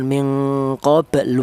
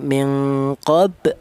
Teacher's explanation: minqobl jangan minqoblu jangan tapi eh mengucapkan huruf lam ya baru apa akan mengucapkan huruf lam tapi tidak sampai berharakat domah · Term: hanya sisa saja